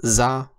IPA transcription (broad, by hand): z